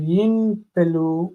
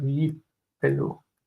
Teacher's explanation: The noon assimilates into the letter pei, and instead of yin pelu, we have yipelu.